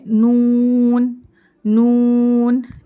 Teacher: زبان کی نوک اوپر مسوڑوں کو لگیں گی, نون, لام اور را تقریباً سیم مخرج ہی ہے تینوں کا. نون کے لیے بھی زبان کی نوک مسوڑوں کو لگ رہی ہے